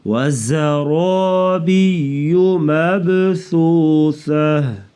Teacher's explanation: زا کو سختی سے پڑھیں گے، را کو پر پڑھیں گے. · با ساکن ہے تو اس لیے قلقلہ یعنی آواز کو تھوڑا سا ہلا کے پڑھنا، اس کو قلقلہ کہتے ہیں